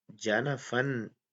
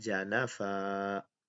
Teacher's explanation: تو اس ضمن میں چوتھا قاعدہ جو ہے یہ بہت اہم ہے، اس کو ضرور نوٹ فرما لیں اور یاد رکھیے گا کہ جس کلمے کے آخری حرف پر دو زبر کی تنوین ہو اس پر وقف کرتے وقت دو زبر کی تنوین کو الف سے بدل کر الف کے برابر ہی لمبا کر کے وقف کریں گے. جیسے جانا فن ہے تو اس پر جب ہم وقف کریں گے تو وہ ہوگا جانا فا.